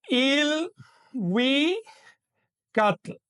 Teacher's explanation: al incorporarse al nawat adquieren una i inicial, es decir, ya no se pronuncian l sino il